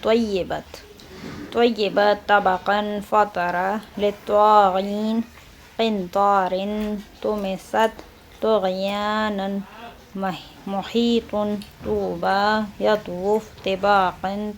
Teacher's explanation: حرف طا، حرف طا یہ حرف تا کی طرح ہی تلفظ ہوتا ہے، صرف فرق اتنا ہے کہ طا درست پرحجم کیا جائے گا، یعنی تا کو ہم باریک ادا کرتے ہیں اور طوا کو تھوڑا موٹی آواز کر کے پڑھتے ہیں